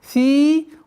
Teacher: Долгота в размере 2 огласовок кясра. Удлиняем. Фи.